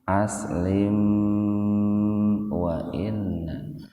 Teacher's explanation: kalau bersambung itu mimnya dibaca idhar sapawi, dibaca jelas di bibir, tahan 2 ketukan.